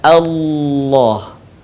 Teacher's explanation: Bukan Allah tapi Allah. Suaranya menebal dengan cara menutupkan bagian lidah kita ke langit-langit. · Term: lafaz Allah